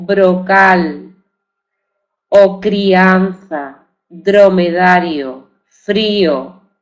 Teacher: esa r es un sonido simple de acuerdo no es no es múltiple es simple solo se se pronuncia una e el sonido de la suave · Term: vibrante simple